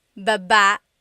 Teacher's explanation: Then there's baba, Baba. Emphasis is on the second syllable.